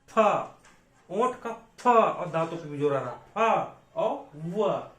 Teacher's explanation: दंतोष्ठ व्यंजन, ठीक है, दंतोष्ठ मतलब ओंठ का भी प्रयोग होगा और दांत का भी प्रयोग होगा।